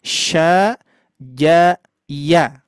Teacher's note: Yang nempel adalah tengah lidah.